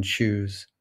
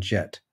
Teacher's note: a consonant that starts out as if it's going to be a stop and then finishes as if it were a fricative english only has two affricate consonants and they're both palatal velar